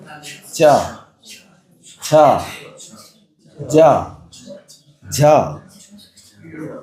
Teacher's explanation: ये जो आपने च वर्ग का उच्चारण किया उस च वर्ग के उच्चारण में जहां आपकी जहवा ने जाकर के विराम पाया वो स्थान होता है तालु स्थान